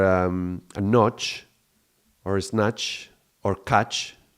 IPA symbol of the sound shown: tʃ